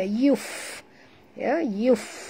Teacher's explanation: huruf fa di sini sahabat ya. Mati, maka kita bunyikan hamasnya